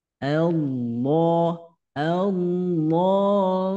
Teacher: Alif lamnya diabaikan tidak dibaca langsung masuk kepada huruf Shad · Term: alif lam syamsiah